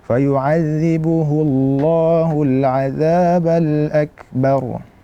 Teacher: hu itu tipis kemudian berjumpa dengan kata Allah Allah itu adalah tebal maka yazbuhul yang tebal adalah lanya bukan Hunya bukan H hullah